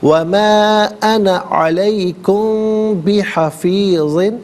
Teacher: انا علیکم بحفیظ، علیکم میں میم ساکن ہے، میم ساکن کے بعد بحفیظ میں با آ رہا ہے تو میم ساکن کو غنّے کے ساتھ پڑھیں گے